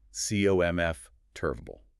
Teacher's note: The jaw drops heavily on C-O-M-F, and then everything else is just a lazy afterthought.